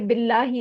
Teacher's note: लामे जलाला बारीक पढ़ा जाएगा क्योंकि उससे पहले जेर आ रही है